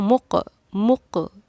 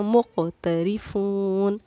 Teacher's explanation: قاف پہ ہم قلقلہ کریں گے، اسی لیے قاف پر ہماری آواز لوٹی ہے. مق اس کو ہم قلقلہ کرنا کہتے ہیں.